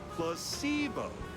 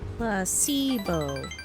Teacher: The stress is on the middle syllables.